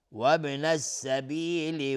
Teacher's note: وابن السبیل با اینجا قلقله میخواد چون ساکنه